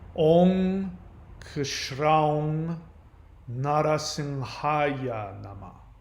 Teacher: the M sound that you see when people chant Om, that's actually an NG sound